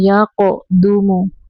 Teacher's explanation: قاف کو کلکلا کریں گے